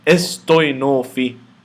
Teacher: The theta follows the sima, so the theta will be pronounced as T.